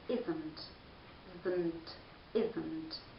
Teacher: there is a very short and light sound called schwa sound between the and n.